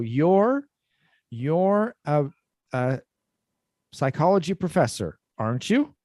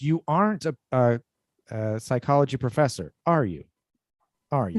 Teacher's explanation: when we have the negative sentence with the positive question tag, it goes down instead of up